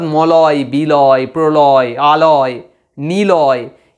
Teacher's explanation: ল বলার সময় আমার জিভটা সঙ্গে সঙ্গে দন্তমূল এবং তালুর মাঝামাঝি জায়গায় অবস্থান করছে, দন্তমূলটাকেই স্পর্শ করছে। যেই দন্তমূল স্পর্শ করছে তাহলে ব্যাপারটা কীরকম হচ্ছে না, অনেকটা এই যে জিভ দন্তমূলকে যেই স্পর্শ করলো তখন জিভের দুপাশ দিয়ে দুটো গ্যাপ চলে আসছে। · লটা উচ্চারণ করার সময় আমরা দেখব জিভের দুপাশ দিয়ে গরম হাওয়া বের হয় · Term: পার্শ্বিক ব্যঞ্জন